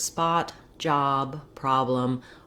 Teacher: The vowel letter O says vowel ah in Spotify, same as in the word spot, job, problem. Often letter O, when it's in the stressed syllable, will say ah in American English.